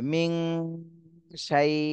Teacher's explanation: নুন সাকিনের পরে ইকফার হরফ শিন এসেছে, এই জন্য এই নুন সাকিনে ইকফা গুণা করতে হবে